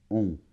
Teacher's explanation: On n'entend pas la lettre N, puisque les 2 lettres forment un son. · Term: la voyelle nasale on